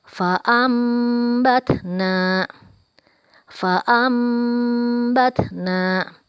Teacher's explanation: akan menyampaikan contoh dari bacaan hukum iqlab farm batna farm batna ada Non mati bertemu dengan huruf ba maka berubah menjadi huruf mim dan kita panjangkan